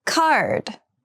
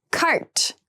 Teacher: card has the voiced D sound and cart has the unvoiced T sound